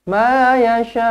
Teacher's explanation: Ada hamzah duduk sama-sama dengan ombak rindu dalam satu kalimah yasha kan. So, mat wajib bila berhenti jadi enam harakat